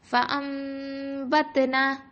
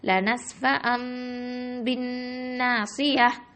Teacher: அந்த நூன் சாக்கினாக்கு பதிலாக நம்ம மீமை கொண்டு அங்கே பொருத்திடுவோம் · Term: இக்லாபு